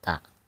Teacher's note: jadi mempunyai sifat alhamas, ada udara yang keluar